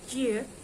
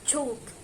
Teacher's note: The sound is made just behind the alveolar ridge or the bony ridge behind your upper front teeth, but in front of the hand palate.